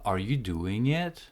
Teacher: have a questions like that requires a yes or no answer your intonation will go up at the end